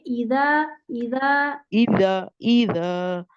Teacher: दाल में नरमी आएगी जबान बाहर निकाल के दाल पढ़ेंगे